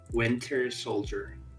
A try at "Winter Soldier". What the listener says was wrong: That sounded like you said the winter shoulder, as in like your shoulder. Soul. Oh, the end bit, J. Soldier. Yeah, it's like G-E-R.